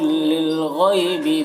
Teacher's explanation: गैन को पुर पढ़ना है और यहाँ पर या लीन है, इसे जल्द पढ़ना है